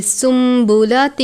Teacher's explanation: یعنی نون کی آواز کے ساتھ نہیں پڑھنا، میم کی آواز کے ساتھ پڑھیں گے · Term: اقلاب